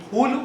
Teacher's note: এই ফুল উচ্চারণ করবার সময় আমাদের ঠোঁট দুটো পরস্পর স্পর্শ করে